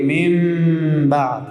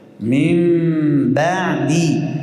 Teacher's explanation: لب‌ها را بسیار اندک میچسبانیم